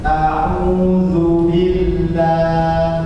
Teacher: Ada suara gunna di ain. Yang keluar dari hidung.